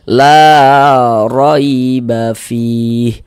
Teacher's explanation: Huruf ro kalau dia memiliki harakat fathah baris satu di atas huruf harakat fathah atau harakat dommah. Huruf ro yang memiliki harakat fathah atau huruf ro yang memiliki harakat dommah maka dibaca tebal, dibaca tabkhim